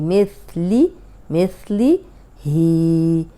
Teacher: ये सा है, ऊपर सामने के जो 2 दांत हैं उनके किनारे पे ज़बान रख के अदा करें तो सीटी की आवाज़ नहीं आएगी।